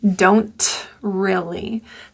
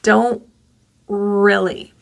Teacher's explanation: So I'm going to put in the glottal stop.